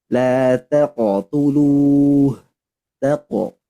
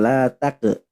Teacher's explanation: Huruf qaf sukun maka harus tebal